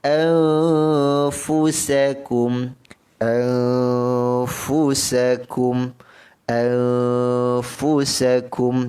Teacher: nun mati bertemu fa, dengungkan dengan kadar 2 harakat. Hukumnya ikhfa hakiki, dengung 2 harakat.